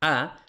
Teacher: en la A la lengua no sube, la lengua está bastante plana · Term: la vocal baja